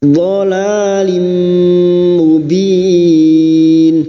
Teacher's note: Dha li lu dhalalim, la alif kecil di atas 2 harakat mad tabi'i. Dhalalim, kasrah tanwin bertemu mim idgham bi gunnah, masuk dengan mendengung, masuk pada huruf mim dan mendengung selama 3 harakat. Dhalalim mubin, mubin bertemunya mat dengan huruf hidup yang dibaca waqaf mat arid alif sukun, 4 harakat kita panjangkan.